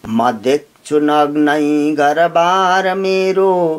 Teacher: म ह्रस्व छ, देख्छु देख दीर्घ भयो, छु ह्रस्व भयो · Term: उपजाति छन्द